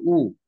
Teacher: জীব পিছনের দিকে টেনে গেছে